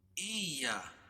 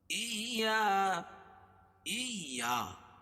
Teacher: مالک یوم الدین ایاک نعبد و ایاک نستعین. ایا، حمزہ کو یا میں جو ہے سختی کے ساتھ ملائیں گے کیونکہ یا کے اوپر تشدید ہے اور تشدید والا حرف 2 مرتبہ پڑھا جاتا ہے. سختی کے ساتھ حمزہ کو یا میں ملائیں گے، پھر یا الف زبر یا.